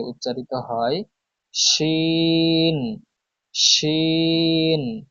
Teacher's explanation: জিহ্বার মধ্যখান তার বরাবর উপরে তালুর সঙ্গে লাগিয়ে